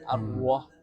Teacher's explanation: dia menggabungkan dua bibir saat melafalkan ra